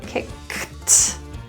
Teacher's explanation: now you have a k for kick, and then you have your T pronunciation for the ed